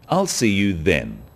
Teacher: Notice how the stress is on the word then to confirm that the time is definite.